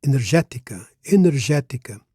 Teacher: Now, energética, the accent is on the third syllable from last. Normally, Portuguese words are stressed on the one before last syllable, the penultimate syllable. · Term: proparoxytone word